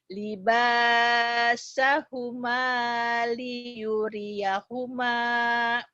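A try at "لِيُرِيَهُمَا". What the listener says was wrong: Yang panjangnya cuman ini ba sama ma sama ma. Ini pendek. Tadi kamu di sini bacanya panjang.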